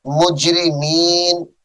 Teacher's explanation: یہ الفاظ مجرمینہ ہے وقف کی حالت میں اس کو مجرمین پڑھیں گے